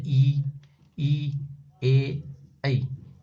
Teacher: जीभ के आगे के हिस्से से बोला जाता है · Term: अग्र स्वर